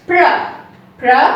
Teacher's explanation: We don't round the lips when we say P-R-O in pronounce, as well as in pronunciation.